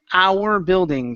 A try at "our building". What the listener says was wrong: watch your tongue on that R as well. Don't roll it as much, okay?